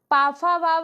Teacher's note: पा फा बावा जो है यह ओट व्यंजन है